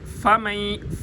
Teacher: اوپر والے دانتوں کو نیچے والے ہونٹ کے ساتھ لگائیں گے تو فا ادا ہوگی